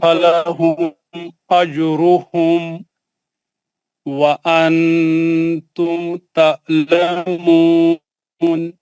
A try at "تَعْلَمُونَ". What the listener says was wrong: یہ آئین کا جو ہے جو جھٹکے سے نہیں پڑھنا. تعلمون نہیں ہے, وہ تعلمون. آپ حلق کے بیچ میں آرام سے پڑھیے, اس کو جھٹکا نہیں ماریے, پڑھیے ان کو.